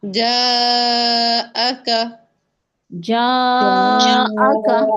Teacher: جا پہ مد ہے، آپ نے جا کو لمبا کرنا ہے